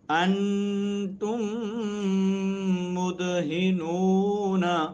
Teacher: اب انتم کی میم جو ہے نا ساکن ہے، آگے میم متحرک ہے، دونوں میمیں جمع ہوئی تو آپس میں ادغام کر دیا گیا